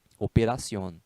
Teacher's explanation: porque a sílaba tônica é a última sílaba né chama-se em espanhol de aguda operación aí veja só operación